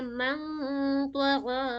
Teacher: یہاں پہ ہیوی غنہ ہوگی کیونکہ نون ساکن کے بعد کیا آ گئی ہے، تو آ گئی ہے، تو ہیوی لیٹر میں سے ہے۔